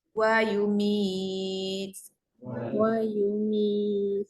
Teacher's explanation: Bila nak berhenti, ta tu kena matikan. Boleh pergi 2, 4, 6. 2, 4, 6 harakat. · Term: ma'arid li sukun